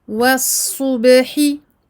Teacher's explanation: Faites attention à bien emphatiser le sad mufakhamah et à amincir le ba muraqqaqa qui ne doit pas être influencé par le sad qui est avant elle.